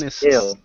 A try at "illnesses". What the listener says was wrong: Illnesses. You're saying willnesses. We want to say illnesses.